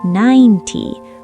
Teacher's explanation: But for t numbers like 30 or 90, the spotlight is at the beginning. [music] The t part is short, fast, and quiet. · All the energy is on nine. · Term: word stress